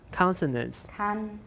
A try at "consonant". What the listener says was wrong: Okay, don't say kang. Everybody watch out. Consonant.